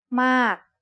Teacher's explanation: It's the word ม า ก and it is said with a falling tone because of this rule. A falling tone begins with a relatively high pitch that drops sharply.